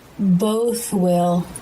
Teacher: Tongue comes through the teeth for the TH, then pulls back, and the lips form the tight circle for the W, while the tongue tip is just behind the bottom front teeth. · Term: unvoiced TH